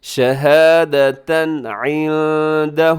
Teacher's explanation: یہاں نون ساکن کے بعد دال ہے تو اخفا کیجیے گا